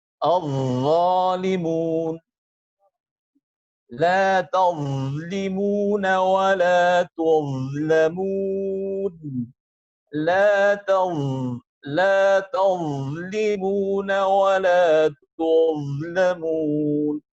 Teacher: huruf dha adalah huruf yang mempunyai sifat rikhwah yang berarti harus mengalirkan suara